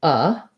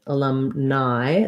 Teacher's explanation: So alumni has stress on the lum. That means my letter A is going to be just a schwa, an unclear reduced vowel.